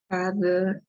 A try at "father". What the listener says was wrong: Pon tu diente entre tu lengua, la lengua entre los dientes acá. Y luego haz que vibre así. No es una D, no es father. Pon la lengua entre los dientes. Como ha visto esa máquina que suena ese sonido.